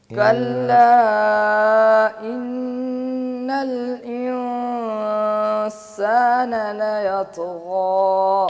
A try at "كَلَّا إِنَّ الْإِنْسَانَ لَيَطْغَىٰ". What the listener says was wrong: تو کے قلقلے کو بھی واضح کریں. لا یطغى.